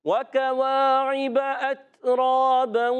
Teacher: واو کی ادائیگی واو ہونٹوں کی گولائی سے، واو پر حرکت ہے، کھینچنا نہیں.